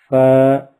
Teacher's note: اوپر کے دانتوں کے کنارے اور نچلے ہونٹ کے تر حصے سے ادا ہوتا ہے۔